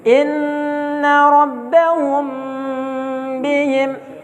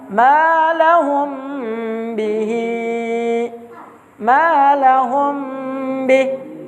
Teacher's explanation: Ada mim sukun ketemu dengan huruf ba. Maka dibaca dengan tempo dipanjangkan, ya, minimal 2 harokat dengan ditahan. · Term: ikhfa syafawi